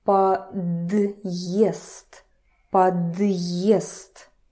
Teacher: Д would turn to a soft sound, but because we have this wonderful hard sign here, it sounds like подъезд, подъезд. So it's kind of divides this word, подъезд, right?